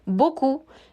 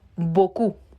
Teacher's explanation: Beaucoup, no pronuncio la P al final. En ciertas ocasiones podremos hacer uso de esta P para llegar a la siguiente vocal y conservar el sonido de consonante vocal del cual hemos hablado al inicio de este video.